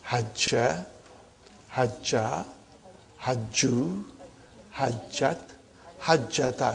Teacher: If the pronoun is a sakin pronoun coming as a file, then the second radical loses its vowel and it is assimilated with the third radical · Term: idgham